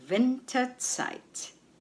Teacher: The stress is on Win, on the first syllable.